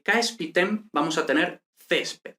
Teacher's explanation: vemos aquí que este AE se convierte en E